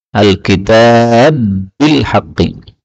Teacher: Ini ba ketemu ba boleh idgham